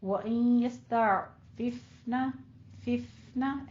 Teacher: ففنا میں تھوڑا سا ہمس کریں گے فا ساکن کے اوپر